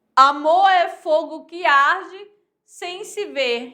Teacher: Com assento obrigatório, né? Na sexta e 10ª sílaba. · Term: heróicos